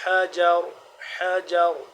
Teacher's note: حا کو حلق کے درمیانی حصے سے ادا ہوتا ہے · آخر میں را کو موٹا پر پڑھیں گے۔